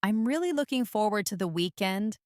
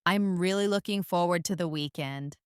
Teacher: Listen to the way my voice rises on really to show enthusiasm.